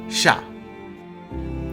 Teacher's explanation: Sha se prononce comme l'animal, le chat, mais légèrement avec la langue au fond du palais.